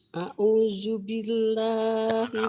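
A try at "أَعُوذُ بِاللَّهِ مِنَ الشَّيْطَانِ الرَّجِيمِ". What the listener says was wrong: A'udzu ya, jangan terlalu a'udzu. Jangan a'udzu, a'udzu. Kerasin dikit.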